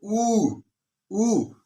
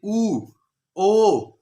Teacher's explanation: जिन स्वरों को बोलते समय जो अपना मुख है वो वृत्त की तरह हो जाता है, जैसे कि गोल हो जाता है। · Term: वृत्तमुखी